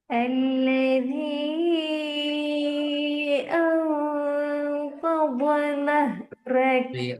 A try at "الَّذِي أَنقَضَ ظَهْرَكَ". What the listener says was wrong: தோ லேன்னு வரக்கூடாது. தோ லா. தோ லா ரெண்டும் ரெண்டு சவுண்ட் வர வடிவமைக்கு தான் ரெண்டும் உண்டு. நீங்க என்ன செய்வீங்கன்னா ஒன்றா தாண்டு ஓதுறீங்க, அடுத்தது லேண்டு ஓதுறீங்க. அப்படி அல்ல. இரண்டிட வடிவம் ஒன்றுதான். இரண்டுமே வானத்தை நோக்கி உச்சரிக்கப்பட வேண்டிய எழுத்துக்கள் தான். மாற்ற வேண்டிய இடம் என்னென்றால் தோ என்று அடிச்சு ஓதுறத லா என்று மேலோட்டமாக ஓது மட்டும்தான். ரெண்டுமே வானத்தை நோக்கி தான் போகணும். الذي أنقض ظهرك.